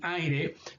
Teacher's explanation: También cuando es parte de un diptongo creciente, de nuevo como en el ejemplo de miedo, se considera semiconsonante, y cuando es parte de un diptongo decreciente, como en aire, se considera semivocal.